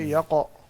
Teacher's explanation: جی قلقلہ درست کریں. قاف کو موٹا کر کے